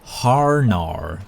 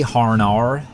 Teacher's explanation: Like, because her name's Hannah, but because I'm like, oh, you're American, right? You just love adding those R's to the end of words. I'm like, hey, Harnar, how's it going?